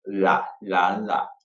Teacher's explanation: Now, think of the L, like lucky or like. When we say the L, the tongue goes forward and it curves with our teeth.